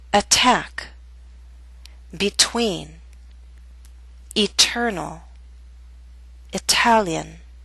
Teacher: we have a true T in the middle of a word at the beginning of a stressed syllable